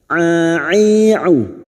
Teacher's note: huruf ain yang memiliki sifat jahar dan tawasud, jangan samakan dengan hamzah